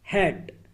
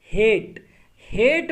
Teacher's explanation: हेट में जो ए का साउंड है ये लॉन्ग वावल का साउंड है, ये ज़्यादा लंबा साउंड है